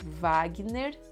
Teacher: sometimes in Brazil, the W will sound like V